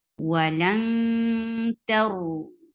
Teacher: For fatha, open your jaws and give ikhfa on noon. You're hiding the sound of noon. You're going towards the articulation point of ta.